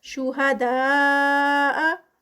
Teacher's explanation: مدے متصل کیونکہ اسی کے اندر ہی مد آ رہی ہے تو 4 کاؤنٹس کا اسٹریچ